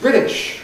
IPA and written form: ˈbrɪt̬ɪʃ (British)